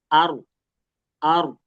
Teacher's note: Ini ar, tetap getarannya, cuman jangan terlalu banyak.